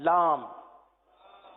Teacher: لام کی میم جو ہے وہ ہونٹوں کے خشک حصے سے ادا ہوتی ہے، وہ حصہ جو باہر رہتا ہے.